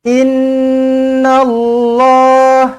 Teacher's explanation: Inna Allah, nun sabdu wajibul gunna, dengungkan dua harakat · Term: wajibul ghunah